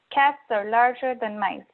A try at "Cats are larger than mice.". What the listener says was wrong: You have a little too much energy on the word than, and there's a little hesitation between your larger and your than and between the than and the mice. You have to flow in the same breath of air.